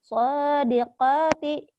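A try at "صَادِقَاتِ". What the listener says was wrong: Sodiqoti. Soalnya panjang. Lagi diulang.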